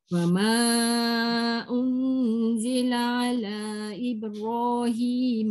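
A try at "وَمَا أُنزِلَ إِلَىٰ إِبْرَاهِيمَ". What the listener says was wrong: Panjang sikit. Ala.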